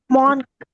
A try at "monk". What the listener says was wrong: இது வந்து மாங்க்னு சொல்ல படிக்க கூடாது. மங்க். மங்க் வந்து MUNK தானே இருக்கும் அப்படின்னு இல்ல. உச்சரிப்பு வந்து மங்க்னு படிக்கணும். ஆனா இந்த வார்த்தை வந்து மாங்க், சாமியார்.